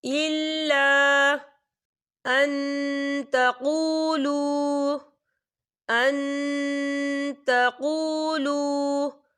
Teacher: الف سے پہلے زبر ہے اور اس پر مد بھی ہے، تو ہم اسے 4 حرکت کے برابر کھینچ کے پڑھیں گے